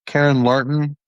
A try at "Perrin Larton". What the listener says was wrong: Perrin with a P.